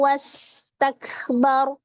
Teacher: ketika diwakafkan disukunkan dan dibaca dengan tebal karena sebelumnya berharakat Fathah